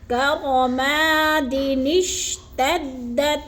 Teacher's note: دال کو شین کے ساتھ جوڑتے ہوئے درمیان میں اس چھوٹے سے نون کو ادا کریں گے